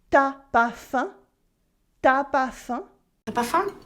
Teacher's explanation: cutting the u from tu before a vowel